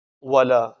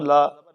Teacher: لام کھڑا زبر لا، ایک الف کے برابر لمبا کریں گے